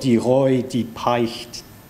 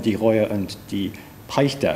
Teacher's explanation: the omission of final unstressed E apocope is very common in speech